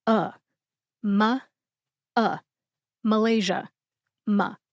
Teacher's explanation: By the way, the A in ma is very much a schwa A sound. It sounds like the A in adoption.